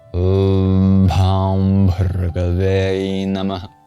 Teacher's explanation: It's a nasal sound that you'll hear at the end of Om and Bhawm. · at the end of Namah, you have this H with a dot under it. That's the Visarga, the mini exhale. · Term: Anuswara